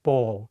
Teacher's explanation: Remember that in English, some L sounds are hard, like the L's in ball.